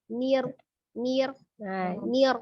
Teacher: Takrir itu artinya ujung lidah bergetar. Hanya 1 kali yang diperbolehkan.